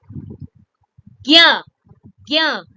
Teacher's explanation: it is formed by joining two consonant sounds ja and iya together. Ja and iya together will become gya.